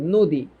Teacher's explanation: দীর্ঘইকার হইলে উচ্চারণটা দীর্ঘ হয়। হ্যাঁ, এটা সংস্কৃততে হয়, বাংলা ভাষায় এটা হয় না।